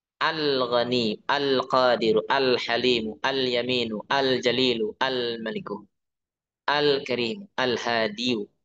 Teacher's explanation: Jadi idhar. Benar-benar jelas suara lamnya.